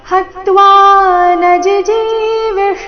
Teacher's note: ನ ನಂತರ ರಸ್ವಜಿ ಅದರ ನಂತರ ದೀರ್ಘಜಿ ಇದೆ